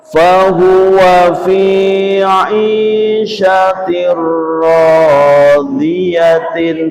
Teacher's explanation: kasr tanwin bertemu dengan ra, dibaca suara tanwin diganti suara ra dengan cepat